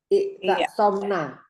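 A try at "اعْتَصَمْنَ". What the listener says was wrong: Nanya pendek ya. I'tasomna.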